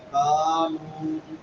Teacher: الف مدہ اور واو مدہ دونوں ایک الف کے برابر لمبے ہوں گے